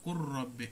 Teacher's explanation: এই কফের সাথে র ডাইরেক্ট লেগে যাবে ইদগাম হয়ে